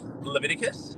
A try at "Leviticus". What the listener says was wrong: You're missing 1 syllable. It's a tough one. 5-syllable last name, Leviticus.